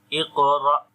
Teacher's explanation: when hamza comes with sukun sign on it, we make jerk sound